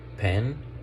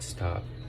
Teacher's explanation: in the word pen, the P has like a more strong puff, and in the word stop, it doesn't. It sounds like if it were invisible, stop.